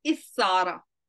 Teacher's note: The ta of the family is changed into tha, and the rule of idgham is applied